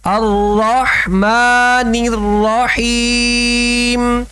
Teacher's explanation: را کو پر پڑھنا ہے اور حا کا خاص خیال رکھنا ہے، الرحمن الرحیم نہیں پڑھنا، الرحمن الرحیم۔